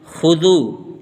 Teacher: یہاں پر واو مدہ آیا ہوا ہے، اس لیے ذو کو کھینچ کے پڑھیں گے، ما کھینچے گا کیونکہ مد آیا ہوا ہے۔